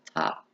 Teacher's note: buck sounds are produced by the lips these are bilabial sounds the sound is a voiceless stop sound · The p sound is a voiceless stop sound.